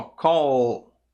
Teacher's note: Para fazer o som do L, você tem que usar a voz, por isso que ela é uma letra vozeada.